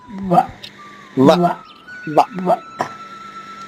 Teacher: వ అనేది పై పెదవు పై పళ్ళు కింద పెదవులు కలిస్తేనే వస్తుంది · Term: దంతోష్టవీములు